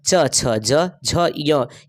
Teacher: तालव्य वर्ण के नाम से जानी जाती है क्योंकि इसका उच्चारण जो है वो तालू के सहायता से होती है